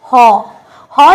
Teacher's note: যেটা উচ্চারণ হয় আমাদের কোথা থেকে আমাদের কণ্ঠ নালী থেকে যেমন হ যখন আমরা উচ্চারণ করছি একেবারে আমাদের কোথা থেকে উচ্চারণ